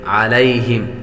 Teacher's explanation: یا حروف لین میں سے ہے، میم پر غنہ نہیں کریں گے